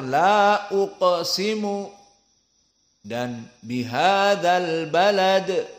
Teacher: apalagi Dal di sini Qalqalah yang wusta